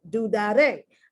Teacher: I'm putting the accent on the last syllable.